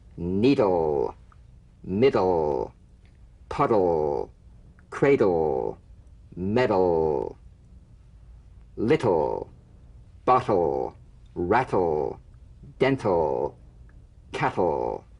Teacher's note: Feel the typical drum beat damped in the tip of the tongue as the D or T click, slides quickly into the L. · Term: DL and TL